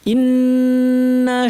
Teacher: ইন্না কি হয়ে গেছে, এই যে টান চলে আসছে, টান তো নাই, ইন্না টান ছাড়া। নুনের উপর তাসদিদ লম্বা গুন্না